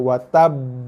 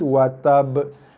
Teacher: Tekan dulu ataupun beratkan bacaan huruf atas huruf ba dulu sebab ada sabdu. Kemudian barulah lepaskan lantunan qalqalahnya. Watab. Bukannya terus watab. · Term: qalqalah akbar